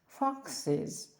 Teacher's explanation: додаємо і S що вимовляється як is